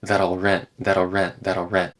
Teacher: I'm not doing a clear l sound · the L in that gets kind of reduced and it just turns into that'll rent that'll rent that'll rent